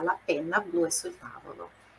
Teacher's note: penna, tem dois N's, aquela forçadinha na pronúncia